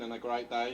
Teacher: The diphthong EI can be articulated as I on words like great and day. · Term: Brummie accent